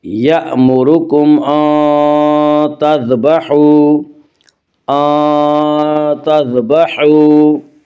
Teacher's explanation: یأمرکم ان تذبحوا، ان تذبحوا، واو مدہ وہ واو جو ساکن ہو اس سے پہلے پیش ہو، واو مدہ کو ایک الف کے برابر کھینچ کر پڑھیں گے۔